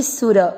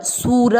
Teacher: सु की मात्रा छोटी, सु र पूरा र में मिक्स करेंगे सुर, सूर नहीं करना